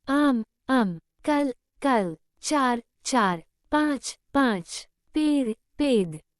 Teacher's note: हिंदी भाषी शब्द के अंत में अ रहित व्यंजन का उच्चारण करते हैं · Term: अ लोप